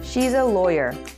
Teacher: the falling intonation is in the word lawyer, and the sentence is complete